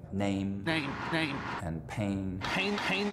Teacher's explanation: it's actually very narrow the diphthong doesn't move very far